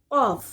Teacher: قاف زبان کا پچھلا حصہ جب اٹھ کر اوپر کے تالو سے لگے، جب قاف ادا ہوتا ہے